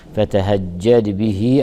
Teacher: فتهجد يراعى ترقيق الفاء وترقيق التاء وترقيق الهاء وترقيق الجيم وضغط الجيم المشددة كي يظهر أنها حرفان وليست حرفا واحدا